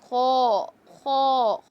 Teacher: خو موٹا حرف بھی ہے، حلق کا حروف تو ہے لیکن موٹا حرف بھی ہے، تو خو کو موٹا بھی کریں گے.